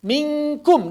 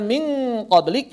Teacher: minkum tipis, min qoblik tebal